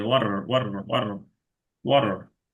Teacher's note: ডি এর মতো, আবার ওয়াটার একদম শক্ত ডি না, একটু নরম ডি, মানে কিছুটা রিল্যাক্স, ফ্ল্যাপটি বলে, মানে জিহ্বাটা জাস্ট একটা করে বাড়ি দিবে তালুর মধ্যে